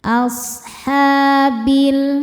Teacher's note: Asha ha mad thobi muqaddar karena huruf ha dengan harakat fathah panjang. Cara bacanya panjang dua harakat.